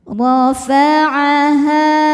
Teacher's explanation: Ra dibaca secara tafkhim karena ra berharokat fathah. Cara bacanya adalah ditebalkan. Rafa'aha. Ha hukumnya mad tabi'i dhahiri sebab ada alif yang sebelumnya berharokat fathah.